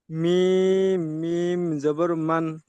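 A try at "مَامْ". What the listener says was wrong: মান কেন হবে? ময়াকার ম কি হয়? ময়াকার ম হলে কি হয়? মাম হয়। গুণনা হবে মাম।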